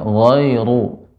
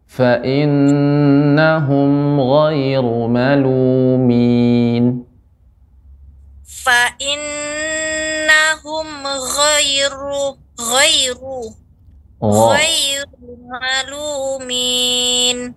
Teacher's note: Ru-nya juga tebal, sedikit getarannya, halus.